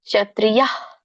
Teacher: ಇದೆ ಹಾಗಾಗಿ ಯ ಯ ಹ ಕೂಡ >> ಯ ಆ ಹ ಕೂಡ ವಿಸರ್ಗ ಕೂಡ ಹ ಆಗಿ ಬರುತ್ತೆ · ವಿಸರ್ಗನ ನೀವು ಅಲ್ಪ ಹೇಳಬೇಕು ಪೂರ್ಣಹ ಹೇಳಂಗಿಲ್ಲ